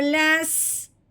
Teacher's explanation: لام کو سین کے ساتھ ملانا ہے اس جزم کے آنے کی وجہ سے، ٹھیک ہے؟ سین سیٹی والا حرف ہے، لام کو سین کے ساتھ ملاتے ہوئے ہم نے سیٹی کی آواز نکالنی ہے۔